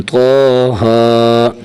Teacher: یہاں طا کو بھی زیادہ نہیں کھینچیں گے اور ہا کو بھی زیادہ نہیں کھینچیں گے. طا کے اوپر بھی مد نہیں ہے اور ہا کے اوپر بھی مد نہیں ہے، صرف کھڑی زبر ہے، کھڑی زبر جتنا بس ایک الف جتنا کھینچنا ہے